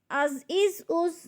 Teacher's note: یہ سیٹی والے حروف میں سے ہے، جب زا کو ادا کرنا ہے تو سیٹی کی آواز ہے